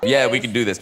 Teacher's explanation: 혀의 본체가 입천장이랑 굉장히 가까워집니다. 그래서 Y 사운드는 청명한 소리가 아니에요. 약간 마찰이 좀 심한 소리예요. 왜냐하면 입천장과 혀 사이에 공간이 너무너무 없어요.